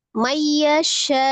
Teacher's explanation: nun sukun ketemu dengan ya, idgham bi ghunnah. Diidghamkan ke dalam huruf ya disertai dengan ghunnah. Mayyasha, syanya mad ya, ada alif sebelumnya fathah di huruf shin.